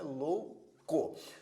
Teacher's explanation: Observe que nesta palavra existe um ditongo, porque tanto a vogal O quanto a semivogal U estão na mesma sílaba, por isso é um ditongo